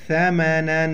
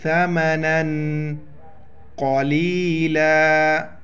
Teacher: لیشترو، یا شین زبر یش، تزتا راو پشرو، لیشترو بیہی ثمنا، نون پر دو زبر ہے، تنوین ہے، یہاں پر اخفا کریں گے، ساؤنڈ ان نوز